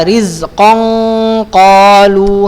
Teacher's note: Jadi ketika tanwin nun atau tanwin berjumpa dengan huruf qaf, ikhfa dia agak tebal.